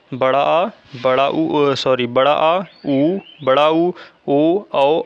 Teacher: पश्च स्वर वह स्वर होता है जिसमें हमारे जीभ का पिछला भाग काम करता है